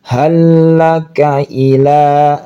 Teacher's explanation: jadi lam yang pertama hilang, masuk ke lam yang kedua, bertasydid ini, maka ditekan. Hallaka ila, la-nya panjang.